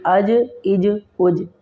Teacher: اب جیم کے اوپر بھی قلقلہ ہوگا، اس میں بھی آواز کو پلٹا کر پڑھیں گے۔